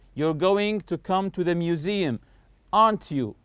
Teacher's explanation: When I say aren't you, notice my voice is going higher